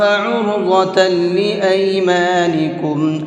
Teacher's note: عین کو حلق سے نکال کر کے پڑھیں گے